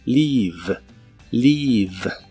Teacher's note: Primero, el verbo leave, que significa partir o irse. Se pronuncia con la I larga y la V es labiodental y vibrante.